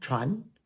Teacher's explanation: Moving on to the second tone, Chuan. Chuan is a rising tone